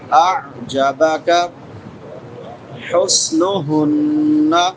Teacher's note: نون مشدد پہ غنہ ہوگا